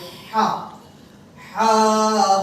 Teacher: একটু কণ্ঠের মধ্যখান থেকে শোষ আওয়াজ